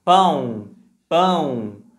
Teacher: Por exemplo, na palavra pão, o som do A, que é um som nasal, esse an, ele é mais forte que o som do O